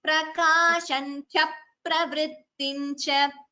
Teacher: There's a dvitvam, so it should be cha pravrittincha. Extra p is heard.